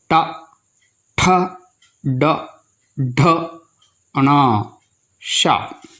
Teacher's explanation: इन अक्षरों को बोलते समय मुंह के भीतर जो छत का अगला प्लेन हिस्सा होता है उसको ज़बान जाकर लगती है। ज़बान को ऊपर लगाने से ही टा वर्ग के अक्षरों को उच्चारित कर सकते हैं। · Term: मूर्धान्य